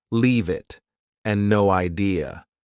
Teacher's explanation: Both sound like they have no spaces between the words.